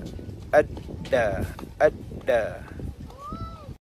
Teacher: satu yang paling pasti adalah jahar, iaitu nafas kita terhalang, yang membezakan huruf ta dan juga dal